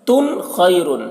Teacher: تنوین کے بعد حروف حلقے میں سے خا ہے تو یہاں پر اظہار ہوگا